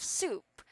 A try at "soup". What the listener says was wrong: This is an S sound, so you don't need to pronounce like an SH, alright?